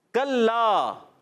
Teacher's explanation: زبان کی جڑ اور تالوں کے سخت حصے سے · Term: کاف کا مخرج